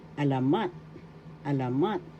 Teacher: alamat first syllable a second syllable la and third syllable mat the accent is in the third syllable · The accent is in the third syllable alamat, alamat,